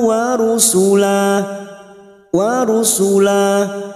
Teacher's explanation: pada saat dibaca wakaf kita panjangkan dua harakat tidak boleh lebih tidak boleh kurang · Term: Mad Iwat